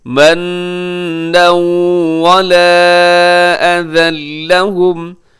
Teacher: انفقوا، آگے منا ولا اذى لهم، منن پہ نون کے اوپر جو ہے وہ تشدید ہے تو یہاں غنہ کیجیے گا، اور اس کے علاوہ نون کے اوپر تنوین بھی ہے، تنوین کے بعد واو حروف یرملون میں سے یہاں پہ ادغام کریں گے غنے کے ساتھ